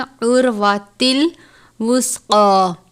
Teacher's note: فَقَدِ اسْتَمْسَكَ بِالْعُرْوَةِ الْوُثْقَىٰ، عین را پیش ار، را ساکن ہے، را کو پر پڑھتے ہیں، عُرْوَةِ الْوُثْقَىٰ، سا کو ہمیشہ نرمی کے ساتھ پڑھتے ہیں، جیسے آپ زال کو ادا کرتے ہیں اسی طرح سا کو بھی نرمی سے پڑھتے ہیں، سا کو سختی سے یا جھٹکا دے کر نہیں پڑھنا، نہ ہی سین کی طرح پڑھنا ہے